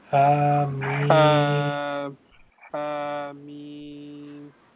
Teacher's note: This Ha is prolonged two times because it has erect fatha, and meme is four times.